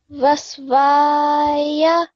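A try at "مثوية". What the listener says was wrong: So remember, this is meme, so mathwaya.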